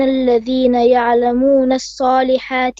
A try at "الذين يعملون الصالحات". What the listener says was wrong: الذين يعملون. You said يعلمون. Once again.